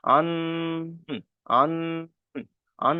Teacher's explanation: আন বলে এক আলিফ পরিমাণ গুণনা করতে হবে